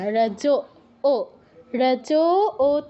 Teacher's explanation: রজু বলবেন না রজ ও রজ ও তে দীর্ঘ